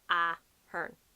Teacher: The emphasis is kind of like at the start, Ahern, and then you go down the ways. It's not like Ahern.